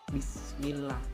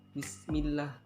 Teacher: yaitu dibaca tarkik ataupun tipis karena ada lam jalalain didahului dengan kasroh, jadi bacaan itu menjadi tipis.